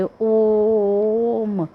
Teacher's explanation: जब हम ॐ शब्द का उच्चारण करते ओम तो इसको बोलने में हम ज्यादा समय लगाते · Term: प्लुत स्वर